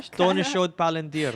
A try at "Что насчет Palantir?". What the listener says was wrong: You're saying like shot. Works too.